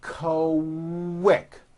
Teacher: the word quick is pronounced with a K and a strong W sound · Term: Q sound